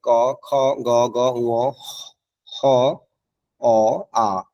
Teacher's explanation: এই বর্ণগুলো হচ্ছে যে কণ্ঠজ বর্ণমালা, যেগুলো কণ্ঠনালী থেকে উৎপত্তি হয়েছে